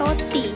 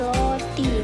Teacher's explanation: kata roti diucapkan menjadi loti, menunjukkan adanya substitusi fonem R menjadi L.